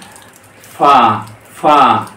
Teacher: তারপরে ফা ফা এই যে এফ এর উত্তর দুইটা ফা ওই উপরের দাঁত এবং নিচে ঠোঁটার মধ্যে